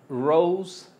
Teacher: la o se contrae hacia u